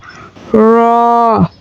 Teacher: জিহ্বার আগার উল্টা পিঠ তার বরাবর উপরের তালুর সঙ্গে লাগাইয়া র